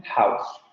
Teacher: esta vocal abierta anterior no labializada, que termina en la vocal central posterior medio cerrada labializada, como en house.